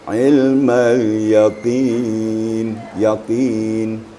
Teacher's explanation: Qafnya apabila baris di bawah kemudian diiringi dengan ya sukun, maka qaf itu lebih tipis.